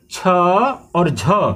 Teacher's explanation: आप छ बोलेंगे सांस आपकी ज्यादा बाहर आएगी, झ बोलेंगे सांस ज्यादा बाहर आएगी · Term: महाप्राण